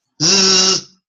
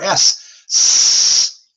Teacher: A Z is a voiced S.